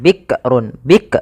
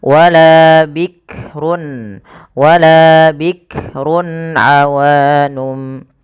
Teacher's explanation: Ya, hati-hati dalam melafalkan huruf kaf, tidak langsung bikrun. Bik, jangan sampai memantulkan huruf kaf karena kaf tidak punya sifat qalqalah